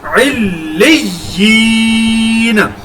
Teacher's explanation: دوسری یا کے ساتھ یا مدہ کی وجہ سے ایک الف کے برابر لمبا کر کے پڑھا اور نون کو ہم نے ساکن کیا۔